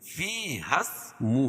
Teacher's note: ہا کو سین میں ملائیں گے. فی اسمہ الٹا پیش قائم مقام واو مدہ کہ اس کو ایک الف کے برابر کھینچ کے پڑھیں گے